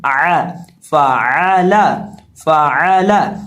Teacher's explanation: आइन हलक के दरमियान से अदा होगा · निचले होंठ का वस्त जब सामने वाले ऊपर के 2 दांतों के किनारे से लगता है तो फा अदा होता है